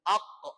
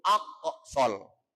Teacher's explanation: Itu ada huruf qaf yang mati atau qaf yang sukun. Hukumnya dibaca qalqalah. Qalqalah artinya nyaklok atau mantul.